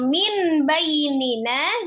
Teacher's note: nun sukun ketemu dengan ba hukumnya iqlab merubah nun sukun menjadi huruf mim